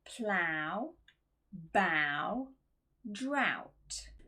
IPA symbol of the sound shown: aʊ